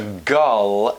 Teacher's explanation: think of changing the sound to the turned V so that the word girl may almost feel like it's a gull